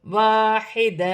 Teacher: وقف کی صورت میں دو زبر کی تنوین ایک الف مدہ میں بدل جائے گی، ایک زبر گر جائے گا، ایک زبر ایک الف مدہ میں بدل جائے گا۔